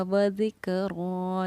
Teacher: کھڑے زبر کو ہم حروف مدہ کے برابر 1 الف کی مقدار کے برابر کھینچ کر پڑھتے ہیں